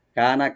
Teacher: কাফটাকে open করে একটা টানবেন, নুনে কোনো টান নাই